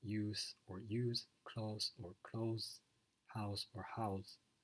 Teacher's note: So there's difference in whether the final consonant is voiced or not